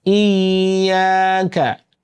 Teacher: হামজা ইয়াজের ই, ই, খেয়াল করতে হবে হামজা শক্ত হবে, ইয়া কিন্তু নরম। হামজা শক্ত, ইয়া নরম।